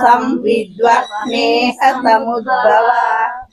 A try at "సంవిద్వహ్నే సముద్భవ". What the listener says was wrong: సం దగ్గర ఆపి విద్వహ్నే అని చదవకూడదు, అక్కడ అర్థం మారిపోతుందండి. ఇక్కడ ఏంటంటే ఇక్కడ మీరు ఎక్కడ ఆపుకోవాలి అంటే చదవలేకపోతే సంవిద్వహ్నే, సంవిద్ దగ్గర ఆపుకోవచ్చు, సంవిద్వహ్నే.